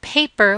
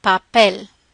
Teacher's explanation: in English there's that puff with those sounds with the the P and T and C in Spanish there should not be that same puff of air